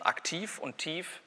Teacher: im Silbenauslaut zwischen aktiv und tief ist gar kein Unterschied mehr bezüglich dieses letzten Segments. Neutralisierung. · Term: Auslautverhärtung